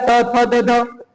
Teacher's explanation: जिह्वा की नोक ऊपरी दांतों को स्पर्श करती है, जैसे कि ये जीभ हमारी जो ऊपर वाले दांत है ये उनको स्पर्श करती है, तो वहां पर दंत व्यंजन हो जाएंगे।